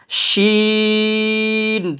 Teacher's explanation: এই শিন হরফটা উচ্চারণের স্থান মানে জায়গা হচ্ছে আপনার জিহ্বার মাঝখান তালুর মাঝখান